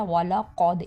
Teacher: قاف کا موٹا کریں گے اور دال پہ قلقلہ یعنی آواز ڈبل آئے گی